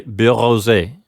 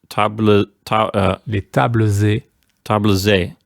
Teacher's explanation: an X and an S both when they get activated through liaison they turn into a Z sound